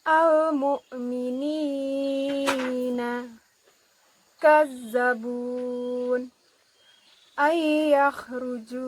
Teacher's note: Mat tabi'i dibaca sepanjang 2 harokat.